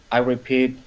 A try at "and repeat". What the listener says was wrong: And repeat, it's the opposite issue actually. So in Pete, it should be a E sound, like a close, like basically tipo E the Portuguese, a very close or closed, whatever you want to call it, vowel sound. And you did a little more like Pit, where I would say Pete.